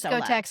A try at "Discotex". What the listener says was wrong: And you have to say that Discotheques is disco-TEX. It's not like a discotheque that we're going to.